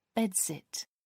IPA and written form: ˈbɛdˌsɪt (bedsit)